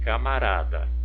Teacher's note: a sílaba tônica pronunciada com mais intensidade, mais força, foi o rá